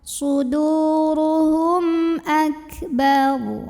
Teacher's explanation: Suduruhum, hum di sini ada idhar syafawi karena ada mim sukun yang menghadapi huruf selain mim dan ba, yaitu huruf hamzah. Maka mim sukunnya ini dibunyikan dengan idhar atau jelas. Jadi bunyinya M dan tidak ditahan